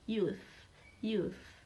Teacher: Youth is fricative sound using your tongue and your teeth. Your tongue is between your teeth.